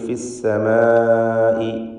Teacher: ഇതിലൊന്നും തന്നെ തഫ്ഖീം ചെയ്ത് ഉച്ചരിക്കേണ്ടവയില്ല. സീനാവട്ടെ, മീം, മീമിൻ്റെ ദീർഘാക്ഷരമായ അലിഫ്, ഇതൊക്കെ തർക്കീഖ് ചെയ്തുകൊണ്ട് ഫിസ്സമാഇ എന്ന് ഉച്ചരിക്കുക. ഫിസ്സമായി എന്ന് പറയാവതല്ല.